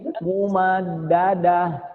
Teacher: Makhrajnya huruf H ini adanya di tenggorokan paling bawah, bukan ada di dada, tapi di tenggorokan paling bawah ya. Aqsal halqi namanya, tenggorokan paling bawah.